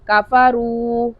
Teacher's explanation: काफ को बारीक और रा को मोटा पढ़ेंगे, वाव मद्दा को अदा करेंगे।